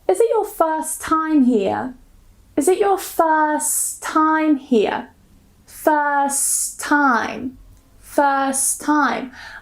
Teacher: I just remove the T first time. · First time, first time. I just removed the T.